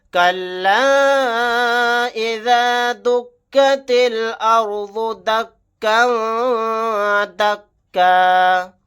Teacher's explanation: تا کو لام کے ساتھ ملا دیں گے، الف نہیں پڑھا جائے گا · كَلَّا إِذَا دُكَّتِ الْأَرْضُ دَكًّا دَكًّا. یہاں پر مد منفصل کا قاعدہ ہوگا، اس مد کو 3 الف کی مقدار کھینچ کر پڑھیں گے